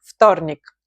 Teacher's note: you write it with V, as you can see, but you pronounce it more with F in the beginning